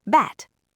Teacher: Bat has an unvoiced T, so the vowel's fast.